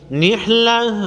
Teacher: نحلہ آگے وقف مطلق کی علامت ہے، نحلتن کو وقف کی صورت میں نحلہ پڑھیں گے، یعنی گولتا کو وقف کی صورت میں ہا پڑھیں گے۔